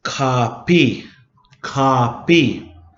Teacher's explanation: And the K's are actually said in the front of the mouth. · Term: K sound